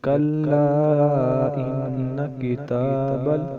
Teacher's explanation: کلا کے اوپر جو مد ہے اسے ہم مد منفصل کہیں گے، کیونکہ حمزہ دوسرے کلمے میں ہے۔ یہ اس کو 3 یا 4 الف کی مقدار ہم لمبا کریں گے